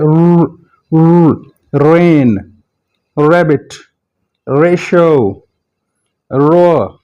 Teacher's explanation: जुबान जो है ऊपर वाले रिज की तरफ जाएगी लेकिन टच नहीं करेगी।